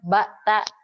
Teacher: Ketika pengucapan ba, ya, pita suara kita itu sebenarnya dia menutup kemudian membuka secara spontan serta merta dan adanya dorongan. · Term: sifat infijar